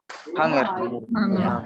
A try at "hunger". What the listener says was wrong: Bukan hunger bacanya. Bacanya hunger. Ya. Hunger. Nah, jadi g ya. G-nya dibaca.